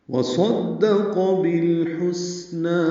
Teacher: واو ہونٹوں کی نا تمام گلائی سے ادا ہوگی